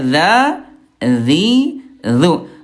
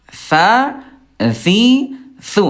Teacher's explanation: Nah, beda sama tha. Kalau tha ayah bunda dia sifat hurufnya al-hams yaitu keluar udara.